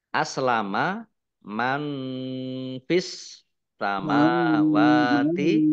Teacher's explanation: Nun sukun bertemu dengan huruf fa, bacaan ikhfa dibaca samar-samar. Alif lam samsiah karena tidak dibaca, langsung masuk ke huruf berikutnya, yaitu sin, ditandai sinnya ada tasdidnya.